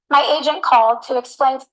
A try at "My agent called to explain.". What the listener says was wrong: E aí o they e T tem som parecidos, é que ela não junta tanto. Ela não tem a tendência de juntar tanto assim, mas poderia ficar uma coisa só também, tá? Então, a gente ligou para explicar.